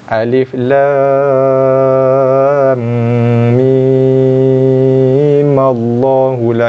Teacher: Wajah yang kedua adalah bacaan wasal. So kita akan wasalkan, hidupkan mim yang mati pada ayat yang pertama tu. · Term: wajah wasal